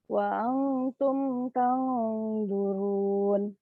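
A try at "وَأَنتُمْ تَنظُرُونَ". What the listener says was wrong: Wa antum masih tergesa-gesa sedikit. Tahan lagi lebih lama.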